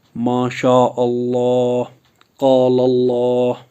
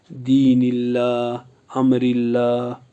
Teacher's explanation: لفظ اللہ کے لام کو پر پڑھا جائے گا